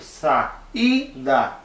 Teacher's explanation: a sílaba mais forte é aquele I do meio